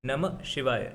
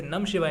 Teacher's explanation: म पे जाके रुकते हैं थोड़ी देर के लिए, नमः शिवाय, कोई भी इसे नम शिवाय नहीं कहता।